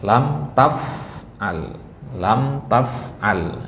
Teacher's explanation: enggak ada yang dilamakan di situ Kenapa karena ada tanda sukun